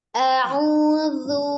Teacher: ujung lidah ada di ujung gigi seri bagian atas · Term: huruf dzal